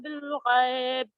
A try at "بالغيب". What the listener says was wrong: بالغیب، ٹھیک ہے، بالغیب غلط ہے. حرف غین آپ کا حروف حلقی میں سے، حروف حلقی میں سے، لہذا اس کو آپ کو کس طریقے سے ادا کرنا ہے؟ حلق کا استعمال کرنا.